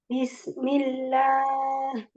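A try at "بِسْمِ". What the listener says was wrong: Jangan ada jeda dari sin sukun ke mim. Bismi.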